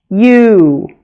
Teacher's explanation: Long U also stretches and glides. U. It starts with a Y sound and sounds like we say you almost twice.